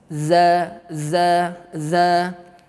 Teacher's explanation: huruf zal, ujung lidah bertemu dengan ujung gigi seri atas